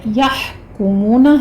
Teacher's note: ہا پر ہمس ہوگا وسط حلق سے ادا کریں گے